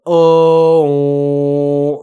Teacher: make the o vowel but as you're saying that make it so that air is also coming out of your nose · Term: nasalized